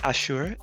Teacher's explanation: I've been pronouncing it like in the Hebrew way, Ashur, emphasis on the second syllable.